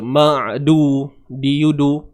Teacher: Huruf dal ni hujung lidah berada di pangkal gigi, tempat tumbuh gigi.